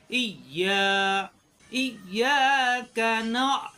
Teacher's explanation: ইয়া দুইবারই ইয়া জিব্বার মাঝখানে উপরে তালুতে লাগবে